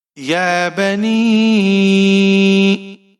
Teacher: یا کے اوپر کھڑی زبر ہے، ایک الف کے برابر کھینچ کر پڑھیں گے۔ با کے اوپر زبر ہے، بغیر کھینچے پڑھنا ہے۔